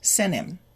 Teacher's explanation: If we say it faster, the T will be deleted